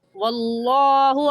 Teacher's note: واللہ میں لفظ اللہ سے پہلے زبر آ گیا تو لفظ اللہ موٹا ہوگا